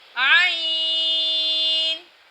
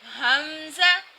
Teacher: عین جب کہ حلق کے درمیان والے حصے سے ادا ہوتا ہے، حمزہ حلق کے آخری حصے سے ادا ہوتا ہے۔